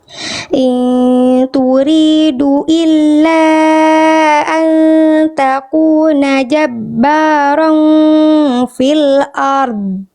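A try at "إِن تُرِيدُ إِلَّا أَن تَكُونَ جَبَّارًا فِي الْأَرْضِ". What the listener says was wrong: Dnya bagus, ron-nya pun bagus. Tinggal r-nya [berdehem] kurang tebal. Angkat pangkal lidahnya tebalkan huruf r-nya.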